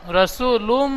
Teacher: رسول من الله রসুলুম গুন্না করতে হবে এখানে, লামে রসুলুম লামের উপর দুপেশ তানবিন, তানবিনটি গুন্না করতে হবে